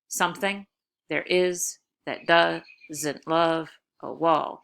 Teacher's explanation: five feet with the stress on the second syllable